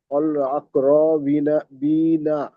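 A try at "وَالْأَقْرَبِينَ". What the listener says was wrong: ওয়াল আকরাবিনা, বা ইয়াজের বি টান হবে না? লামের উপরে সাকিন, সাকিনওয়ালা অক্ষর তার আগের অক্ষরের সাথে মিলিয়ে পড়তে হবে।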